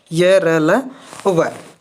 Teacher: जीभ है पूर्ण रूप से इन ध्वनियों का उच्चारण करते समय कहीं भी पूर्ण रूप से स्पर्श नहीं हो पाती, इनका उच्चारण करते हैं तब। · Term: अंतस्थ व्यंजन